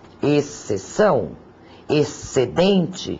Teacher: Embora grafado no dígrafo XC, o X agora não soa. O que se pronuncia é apenas o som do S.